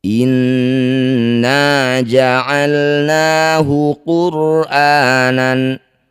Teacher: cara bacanya bunyi nun dengungkan dua harakat · Inna, nun bertasydid, disebut bacaan gunnah musyaddadah. Cara bacanya bunyi nun dengungkan 2 harokat. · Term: gunah musyaddadah